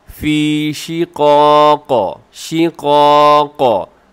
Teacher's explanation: आखिर में क़ाफ़ की आवाज़ को डबल करेंगे।